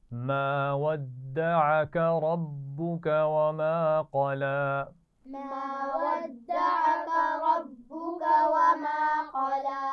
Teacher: रब्बुका में रा को मोटा पढ़ेंगे और क़ला में क़ाफ मोटा पड़ा जाएगा, लेकिन लाम की आवाज़ को मोटा नहीं होना चाहिए